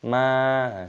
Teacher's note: masukkan gunnah dulu baru dipanjangkan, mim baru dengung, ma, seperti itu.